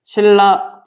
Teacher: 리을이 유음이지? 신라 발음하면 니은이 리을로 바뀐다. 이런 게 유음화에 해당이 되고.